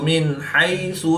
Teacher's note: نون ساکن کے بعد حا حروف حلقی میں سے ہے تو یہاں پر اظہار ہوگا یعنی نون ساکن کو ظاہر کر کے پڑھیں گے